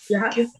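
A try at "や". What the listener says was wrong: Ya, fuerte. Cuando digo fuerte, no hago referencia al volumen de su voz, no hago referencia a la pronunciación de la consonante, por así decirlo. Es ya. Por eso les dije, ¿no?, que cuando ustedes la de abajo la pronunciaban ya, estaban pronunciando en realidad esta. Por eso les dije que la de abajo, esta es ya más suave.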